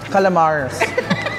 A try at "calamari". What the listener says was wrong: Without the S, calamari. Calamari.